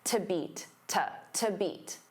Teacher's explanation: Now, to beat because to is a preposition, it becomes unstressed.